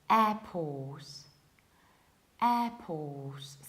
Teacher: In British accents, we pronounce it like airport, airport. So we have a very front and open and wide air, airport. We have then a very long O and we don't pronounce the middle R.